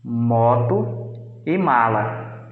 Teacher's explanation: ar sai com um abaixamento do palato mole, saindo pelo nariz